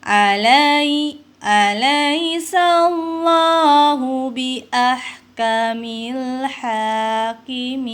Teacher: Allah dibacanya tebal, maka ini disebut dengan tafhim